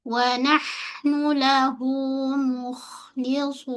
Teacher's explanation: Pada hujung nun satu kali gunah bunyi n. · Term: ghunah